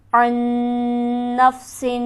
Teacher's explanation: عین کے نون پر ہم غنہ کریں گے کیونکہ نون مشدد ہے جو کہ ہمیشہ غنہ ہوتا ہے